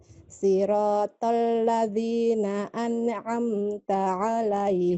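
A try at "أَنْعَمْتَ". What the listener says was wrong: An'amta. An'amta, jangan anne. Jangan an'amta, an'amta. Itu terlalu dini mengambil ainnya Bu ya. Terlalu cepat mengambil ainnya. Jadi sempurnakan nunnya ya. An'amta. An sempurnakan. An ditekan.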